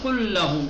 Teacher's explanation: ایک لام حذف کر دیں گے پہلا والا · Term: ادغام